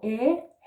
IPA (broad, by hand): æ